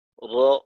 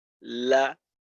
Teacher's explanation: আর যখন আপনি লাম উচ্চারণ করবেন লা, রর মাখরাজটার তুলনায় লামের মাখরাজটা হলো একটু নিচু, অর্থাৎ দাঁতের গোড়ার দিকে, আর রর মাখরাজটা হলো দাঁতের গোড়ার থেকে একটু উপরের দিকে। তো র যখন উচ্চারণ করব তখন জিহ্বাটা সামনের দিকে যাবে, অর্থাৎ দাঁতের দিকে যাবে। আর লাম যখন উচ্চারণ করব তখন জিহ্বার আগাটা দাঁতের গোড়ার থেকে উপরের তালুর দিকে যাবে। এইটা হলো ইনহিরাফের কাজ, র, লা।